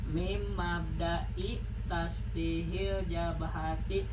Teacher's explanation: Ini kan min tapi karena menghadapi mim jadi idgham kan. Jadi mim ya.